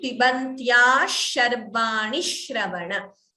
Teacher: Extra sh will be heard before shravana in case you choose not to pause. But if you pause, of course, it should be a hrasva, a short letter. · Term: dvitvam